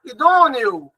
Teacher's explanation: Seria um ditongo decrescente, porque o E é pronunciado de uma maneira mais forte do que o próprio O. Esse O acaba tendo som de U no final.